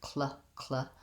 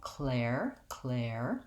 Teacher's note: the back of your tongue lifts for the K, and then the front of your tongue needs to lift for the L, cl. It might be easier to try it with the air vowel, clair, clair. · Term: KL sound blend